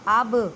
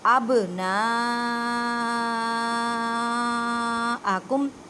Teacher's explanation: اب نہیں کہنا اب، آواز واپس لوٹتی ہوئی محسوس ہوتی ہے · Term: کلکلا